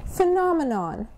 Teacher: The third syllable is a schwa.